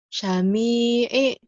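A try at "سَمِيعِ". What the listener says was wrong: Sinnya biasa aja. Sami'i gitu. Sami'i.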